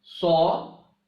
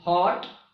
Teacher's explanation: aw as in heart with less lip rounding as compared to the this sound aw as in saw.